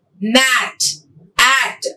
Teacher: Front unrounded vowel just below the half open position.